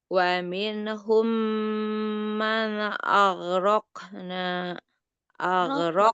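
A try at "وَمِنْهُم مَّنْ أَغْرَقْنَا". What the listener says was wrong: Raqna. Qafnya qalqalah. Enggak aghraq. Man aghraqna. jangan dikolkolahkan.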